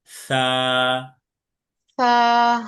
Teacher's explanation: সা হচ্ছে নরম ভাবে উচ্চারণ করতে হবে, যেন সিনের মতো সা না হয়ে যায়। সা উচ্চারণ করতে হবে জিহ্বার আগা, সামনের উপরে দুই দাঁতের আগার সাথে।